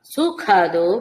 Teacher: మహాప్రాణఖ ఖడ్గంలో ఖ పలకాలి